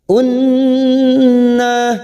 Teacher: Nun yang bertasdid gunna musadadah kita tekan tiga harakat